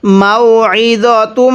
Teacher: আইনটা পড়ার সময় আমরা গলার মধ্যে একটু চাপ দিয়ে পড়ব তাহলে আইনটা সহি শুদ্ধ উচ্চারণ হবে অন্যথা অনেকেই আমরা আইনটাকে হামজা উচ্চারণ করে ফেলি।